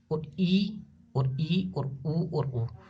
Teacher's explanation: इन स्वरों के उच्चारण में जब अपना मुंह है वो पूरे मुंह खुलने से आधा खुलता है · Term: संवर्त